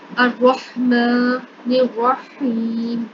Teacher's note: نون کو اگلے لفظ را کے ساتھ ملائیں گے